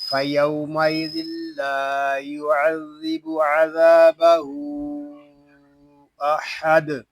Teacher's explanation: یہاں وقف میں دال ساکن ہوگا اور پھر دال ساکن میں ہم قلقلہ کریں گے